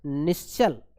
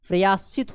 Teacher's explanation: विसर्ग के बाद च आया है, इसीलिए ये आपका तालव्य श आदेश हो जाता है।